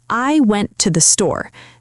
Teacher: The important words are went and store. The word to gets smaller.